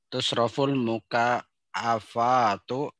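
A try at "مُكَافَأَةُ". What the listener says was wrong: Panjang. Mukafaatu.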